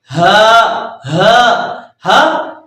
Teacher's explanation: ہا سینے کی طرف سے نکلتا ہے، یہ بھی حلق سے نکلتا ہے لیکن ایک طرح کا وائبریٹ ہوتا ہے سینے میں